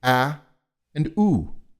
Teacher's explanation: I have to move my lips round them and move them closer together for the U and I have to spread them apart for the a